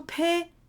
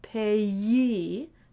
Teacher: it's two vowels and there's no yes sound